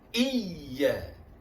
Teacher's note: Hamzah ya sablu di bawah i, ya alif di atas ya. Pada ya yang bertasdid ada hanjutan ringan, ada nabr, hanjutan ringan, suara menaik sedikit ya.